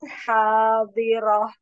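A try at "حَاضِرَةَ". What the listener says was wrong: Nya tak marbutohnya jadi H kurang ke bawah tenggorokan. Hadiroh.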